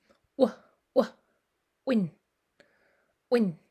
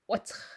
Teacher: like an English W, but pops out a little harder. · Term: hard W